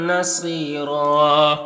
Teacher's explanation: صاد حروف مستعلیہ میں سے پر پڑھیں گے، یہاں پر یا مدہ ہے. اور یہاں پر وقف کریں گے تو ایک زبر کے ساتھ الف پڑھیں گے اور را کو پر پڑھیں گے